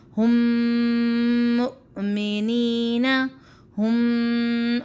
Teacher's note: मैंने अपने मुंह को बंद कर दिया, नाक से डायरेक्ट हमारी आवाज़ आई तो हमने गुन्ना भी अदा किया 1 से 2 सेकंड का, और हमने इसका जो मखरज था उससे भी हमने कोई तजावज़ नहीं किया, सही तरीके से इसको हमने अदा किया।